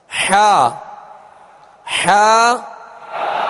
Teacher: حا کا جو مخرج ہے وہ حلق کے درمیان والے حصے سے حا ادا ہوتی ہے · حا عین یعنی عین حا کا ایک ہی مخرج ہے، وہ وسط حلق یعنی حلق کا درمیانی حصہ